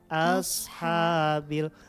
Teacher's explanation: Ketika di sukun, maka hamasnya masih terdengar.